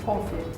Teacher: So like the accent is on the O part.